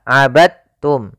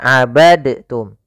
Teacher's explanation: ke ta abadum bukan abadtum ya Meskipun Dal termasuk huruf Qalqalah karena dia memiliki makhraj yang sama dengan Ta Maka diidghamkan dalnya kepada huruf ta sehingga dibaca dengan huruf tanya langsung abadum kita coba ulang wala